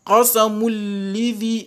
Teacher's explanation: entre les mim et les lam, vous avez idgham bi ghayri gunna, sans gunna